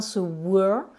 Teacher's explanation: Donc là dans ce were, nous avons le son schwa